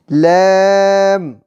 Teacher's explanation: زبان کا کنارہ اوپر کے مسوڑوں سے لگے تو لام ادا ہوتا ہے